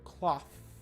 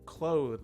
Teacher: when you say the word cloth there's no vibration on the th and when you say the word clothe there is vibration on the th it's just a difference of vibration in your vocal cords so